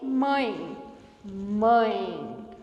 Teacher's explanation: não passa apenas pela boca o mesmo acontece em mãe mãe o som sobe para o nariz e sai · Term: ditongo nasal